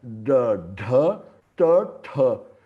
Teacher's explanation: E esses aqui são murdha. A língua ela faz retroflexo, ela sobe no céu da boca.